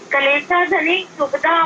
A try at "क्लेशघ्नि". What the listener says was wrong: धनी नहीं, शब्द का उच्चारण ठीक से करो। क्लेशघ्नि, घा है, आधा घा ना, क्लेशघ्नि।